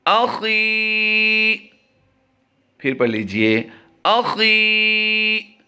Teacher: خی کو ہم لمبا کر رہے ہیں کیونکہ یہاں پر یا مدہ کا قاعدہ ہوتا ہے